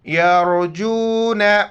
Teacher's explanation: را سے پہلے چونکہ زبر ہے را کو موٹا کر کے پڑھیں گے